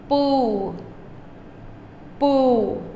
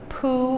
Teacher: a P with no H, no air sound